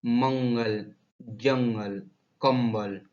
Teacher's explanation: कहीं पर ये मैं होता, कहीं पर ने बोला जाता है। इसमें हवा केवल नाक से निकलती है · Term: अनुस्वार